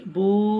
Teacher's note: হামজা উল্টো পেশ উ, এক আলিফ টান হবে। উল্টো পেশ ওয়া মাদ্দার সমতুল্য, এক আলিফ টান দিয়ে পড়তে হয়।